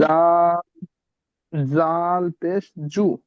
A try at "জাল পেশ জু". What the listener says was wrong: জু বললে জিম হয়ে যাচ্ছে, এখানে জিম পেশ জু হয়। জাল পেশ জু।